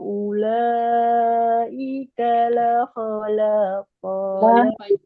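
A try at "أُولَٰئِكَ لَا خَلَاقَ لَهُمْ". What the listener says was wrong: Ulaika la, panjangkan la-nya Bu. Panjang lagi lahnya.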